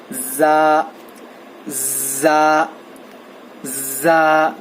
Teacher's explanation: زا کا مخرج جو ہے زبان کی نوک کو نیچے کے دانتوں کے جڑ کو لگانے سے زا ادا ہوتا ہے